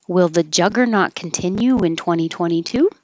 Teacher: this is a yes no question so it'll go up up up up up